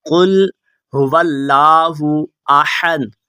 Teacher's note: تو موٹا ہا نہیں باریک ہا پڑھنا، قل هو اللہ احد۔